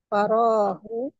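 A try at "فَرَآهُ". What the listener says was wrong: faro'a dia ro'a ya faro'a panjang.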